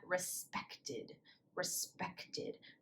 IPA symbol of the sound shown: ɪd